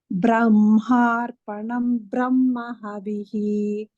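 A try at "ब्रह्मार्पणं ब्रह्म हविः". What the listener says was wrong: Bhagini, there is no Dirgha. The Mahaprana. You have to just say Brahma. Brahma, you should not stress. Brahmarpanam Brahma Havihi.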